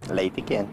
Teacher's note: Acaba sendo trocada pela letra I. São poucos os brasileiros que pronunciam o E, assim, bem falado, principalmente no final das palavras, como aqui na região de Curitiba.